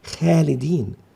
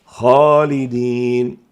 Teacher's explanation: لذلك لا نقول خالدين، بل يجب تفخيم هذه الخاء فتنطق خالدين.